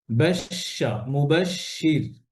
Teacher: তাফাসসি হচ্ছে পুরো মুখে আওয়াজ ছড়িয়ে পড়া